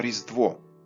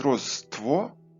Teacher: під впливом В у кінцевому складі ВО звук Т подзвінчився